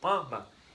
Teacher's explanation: esse M, ele some foneticamente e vira um tio na vogal anterior. Lembrando que só pode ser com M ou com N, tá bom? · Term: som nasalizado